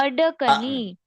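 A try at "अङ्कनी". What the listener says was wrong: ना ना ना, ड नहीं है। मैंने कहा था ना, क ख ग घ अंग। तो उसके लिए केवल खाली अनुनासिक करना है। अंकनी।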